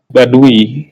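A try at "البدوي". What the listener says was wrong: Dalnya patah, badawi.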